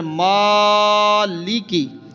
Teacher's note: جب کھڑا زبر ہے تو پیچھے بھی کئی مرتبہ بتایا کہ اس کو لمبا کرنا ہے